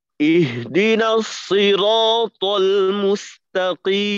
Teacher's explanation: দেখেন এই যে পুরো আয়াতের ভিতরে শুধুমাত্র মিমের পেশের উচ্চারণের জন্য আমাদের ঠোঁট গোল করতে হবে, বাকিটাই তো ঠোঁট খোলা